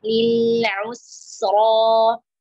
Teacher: Ain sempurna dhamma, au kembalikan ke huruf sin. Us ra tebal di sini ya, baris fathah